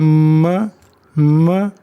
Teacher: अब ओंठ बंद हो गए, ध्वनि नाक से आ रही है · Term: नेजल साउंड